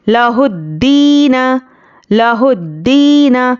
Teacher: دال پر تشدید ہے اور یا مدہ بھی ہے، تو سختی کرنا ہے اور 1 الف کے برابر کھینچ کر پڑھیں گے